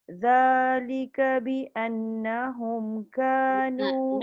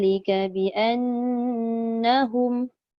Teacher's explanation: Nun sabdu tu panjang sikit. Dengung. Panjang.